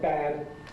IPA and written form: bæd (bad)